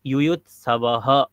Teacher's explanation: ইউৎসবঃ বকারের পরে বিসর্গ আছে, এটাও হকারের মতন উচ্চারণ হবে, তাহলে ইউয়ুৎসবহ এরকম উচ্চারণ হবে।